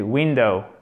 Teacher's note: C'est un i court, mais l'accent tonique est sur la première syllabe.